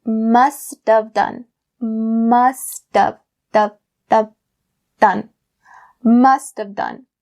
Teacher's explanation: you turn the word have into of, like the word of that we talked before